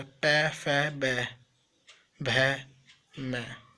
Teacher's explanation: ओष्ठ से, दोनों ओठों से,